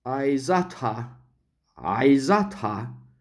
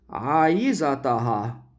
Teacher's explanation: this ha, long a, is short in Egyptian Arabic. And then the ha would be added to the aiza. · Notice again a very important feature, that the stress shifts to the next to last syllable